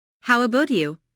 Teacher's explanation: Notice the intonation falls here because the speaker is going to follow it up with a detailed question.